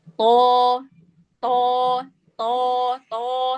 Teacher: kalau huruf to dia terkepung tapi dia tetap harus ke depan suaranya, bukan berarti dia ke dalam.